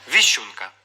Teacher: сім Отже цей варіант мінус б віщунка у слові сім букв буква ш позначає завжди два звуки шч